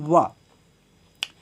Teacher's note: दंतोष्ठ यानी दांत और ओठ से बोले जाने वाले, यानी दांत और ओठ दोनों की सहायता से बोले जाने वाले